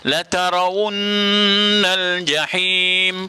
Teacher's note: La tarawunna, la tara tak betul lah, la tarawunnal jahim. Nun syaddah, nun syaddah, maka kita dengungkan wajibul gunnah